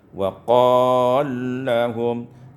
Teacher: idghamul lam fil lam, diidghamkan lam pada lam, sehingga kita baca wa qallahum.